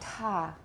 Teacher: voiceless aspirated alveolar initial stop